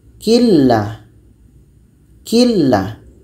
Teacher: Bunyi nun hilang masuk kepada la. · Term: idgham bila gunnah